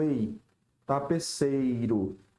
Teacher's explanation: o E é a vogal e o I é a semivogal. Ó, ditongo decrescente.